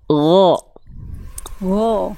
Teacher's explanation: huruf Gin dilafalkan dari tenggorokan paling atas atau tenggorokan paling luar atau ujung tenggorokan